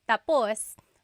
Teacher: when the emphasis is at the end tapos that means finished. When the emphasis is on the first syllable tapos then it means next.